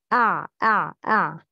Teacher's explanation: Ain exits from the middle of the throat.